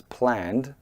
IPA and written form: plænd (plan)